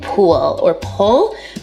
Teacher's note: l vocalization so that's an L turning into a vowel